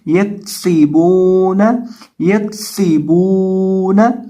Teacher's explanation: سین میں سیٹی کی آواز پیدا کریں گے کیونکہ سین حروف صفیریہ میں سے ہے · با کو ایک الف کے برابر لمبا کریں گے، کھینچیں گے، اور نون کے اوپر زبر ہے تو اس کو پڑھیں گے یکسیبون، یکسیبون، یا زبر دال ید، خو پیش خو، یدخو، لام پیش واو لو یدخلو نون دبرنا یدخلون.